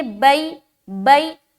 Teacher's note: آگے با یا زبر بئی، یا ساکن سے پہلے زبر ہے، یا لین ہوگی، یا لین کو نرم آواز کے ساتھ جلد اور معروف پڑھیں گے